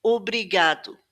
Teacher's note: at the beginning of the word, it actually has a more closed sound, o. Obrigado.